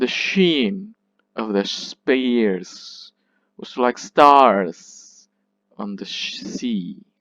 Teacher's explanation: this is the anapest or anapestic unstressed unstressed and then stressed